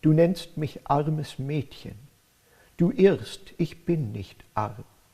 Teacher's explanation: iambic trimeter with pauses between lines, short pauses after odd-numbered lines, longer ones after even-numbered lines, and with strong stresses near the end of each line